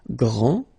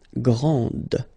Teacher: Okay, so we get a little bit the same situation here as we had previously with français and française, because we don't pronounce the final S in français, and it's exactly the same thing. This final D is not pronounced.